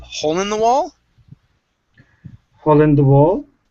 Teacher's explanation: this is going to be hole in the wall so our voice is going to go up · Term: our voice goes up